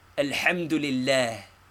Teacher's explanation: the accent falls upon la but lightly